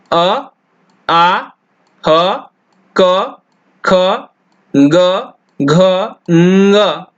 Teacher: अ, आ, ह, क, ख, ग, घ, ङ और विसर्ग, इन सब का उच्चारण स्थान कंठ होता है।